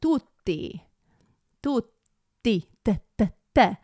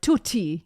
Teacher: The T is more like, it's not as plosive. It's a little softer and it's a little bit more right behind the teeth, like tutti, te, te, instead of tutti.